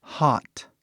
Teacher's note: ele é um A, né? Mesmo um A. Tipo um O bem aberto. Assim, né? Ou talvez um A super aberto até, dependendo no seu sotaque.